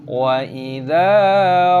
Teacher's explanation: Perhatikan dal dibaca panjang dengan tanda alif, mad thabi'i. Perpanjang dua ketukan.